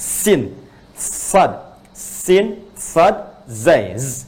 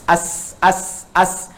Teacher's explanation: Sin Shad dengan Zai itu di ujung lidahnya ini